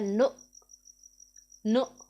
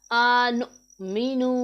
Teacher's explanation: حمزہ ساکن ہے، اسے ہم نے جھٹکے کی آواز کی طرح پڑھنا ہے، نو نو ایسے پڑھنا ہے اسے۔